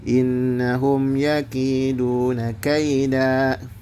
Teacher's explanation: Pertama hukum gunah itu nun bertasdid ditahan dua harakat. Yang kedua ada hukum ee izhar syafawi.